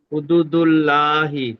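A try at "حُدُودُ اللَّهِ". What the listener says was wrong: হ্যাঁ, লা কেন বললেন? আপনি লা কেন বললেন? হুদুদুল্লাহ, জি, ল হবে, বলেন। লাম খাড়া যাবার এখানে কি হবে, লা না ল? ল বলেন, মুখ গোল করেন, ল।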